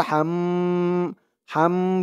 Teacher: গুন্নাহ করতে হবে ওয়াজিব গুন্নাহ হরকতের পরে মিমের উপরে তাসদিদ আসছে